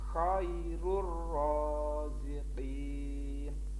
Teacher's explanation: well tanwin bertemu dengan huruf Roro Hai bacaan Idgham bilagunnah sekarang bacanya langsung masuk ke huruf roh tidak boleh mendengung